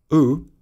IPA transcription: u: